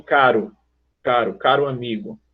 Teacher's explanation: TEP é aquele R do meio de frase, de meio de palavra. É aquele R que a gente pronuncia do caro, caro amigo.